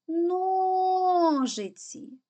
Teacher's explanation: наголос падає на о тому перший склад наголошений